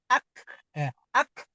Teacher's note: huruf kaf itu tadi saya bilang ada aliran ee hembusan nafas. Ketika bacanya ee sukun maka ak e ya ak.